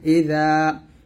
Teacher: এই যে আইনের উচ্চারণটা চাপ দিয়ে বলতে হবে, আইন হা জবর আ, হামজা জের ই, জাল আলিফ জবর যা, জাল উচ্চারণটা জিহ্বার আগা সামনের উপর দাঁতের আগার সঙ্গে লাগাবেন